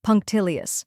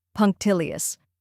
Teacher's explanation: till which rhymes with pill and is the stressed syllable